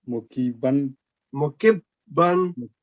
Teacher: this kaf with kasra will straight joining with this ba with tashdid. No elongation in between. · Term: shadda